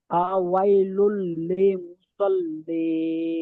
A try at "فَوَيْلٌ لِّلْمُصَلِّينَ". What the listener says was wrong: লিল, লিলটা পরিষ্কার আসে না। ফাওয়াইলুল লিল। লি নয়, ফাওয়াইলুল লি বলছেন, লি হবে না। ফাওয়াইলুল লিল। লিল লিল।